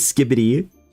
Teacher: you put the emphasis on the first syllable